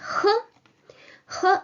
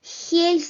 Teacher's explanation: no need to make it too strong like an H uh it's a mild soft form